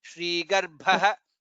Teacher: ga is alpa prana and bha is mahaprana